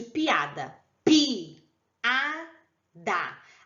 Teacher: É o encontro de duas vogais, porém, como as duas são fortes, elas ficam em sílabas diferentes, tá? No caso de piada, pi, a, da. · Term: hiato